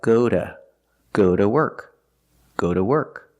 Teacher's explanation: sometimes it's pronounced duh when it's not stressed and it's after a vowel